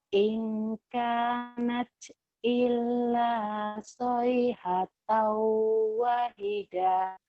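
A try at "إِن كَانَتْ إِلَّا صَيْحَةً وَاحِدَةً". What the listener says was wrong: Wahnya panjang Bu. Wahidah. Panjang ya Bu ya. Wahidah. Wahidatang. Wahidatang.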